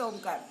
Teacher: अचा उच्चार करताना किंचित ओठ उघडून अ करायचा आहे. ओठांचा गोलाकार करून उ म्हणायचा आहे आणि ओठ बंद करून मकार म्हणायचा आहे. अचा उच्चार हा पोटाच्या स्नायूंमधनं निघणार आहे.